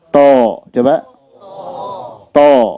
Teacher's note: Jadi bukan hanya yang difungsikan ujung lidahnya, to misalnya, tapi to memfungsikan lidah yang belakang juga. Dan dia qalqalah ya.